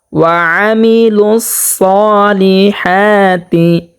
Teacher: আইনটাকে উচ্চারণ করতে হবে 2 নম্বর মাখরাজ হতে, হলকের মধ্যখান হতে স্পষ্টভাবে।